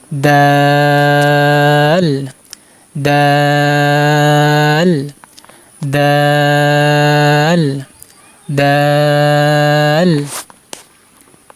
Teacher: দাল হরফ জিহ্বার আগা সামনের উপরে দুই দাঁতের গোড়ার সাথে লাগিয়ে উচ্চারণ করতে হবে।